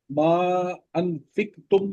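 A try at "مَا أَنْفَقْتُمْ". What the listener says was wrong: نہیں، ایک اوپر زبر ہے نا، ما انفقتم۔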